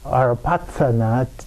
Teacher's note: Tibetans say Arapatsana, TSA instead of TH or CHA in the middle of that